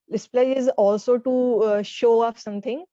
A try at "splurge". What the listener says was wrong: So pronounce it correctly. It's splurge. when you say it fast, okay, it's no, it's not completely silent. So there is less emphasis on it. So it's splurge, splurge.